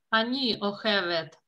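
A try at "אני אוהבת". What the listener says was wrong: Вы говорите на последний слог.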